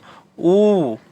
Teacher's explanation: देखिए गोल हो गया ओठ, गोल गोल टाइप के हो जाएगा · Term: ओष्ठ